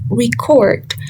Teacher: Record is a noun, so the stress falls on the re, which is the first syllable. And as a verb, record, the stress falls on the second syllable, cord, because it is a verb